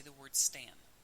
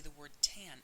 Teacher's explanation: notice that you can do it easily when you say the word Stan but when you say the word tan it's almost impossible for you to have the articulatory control to stop yourself from aspirating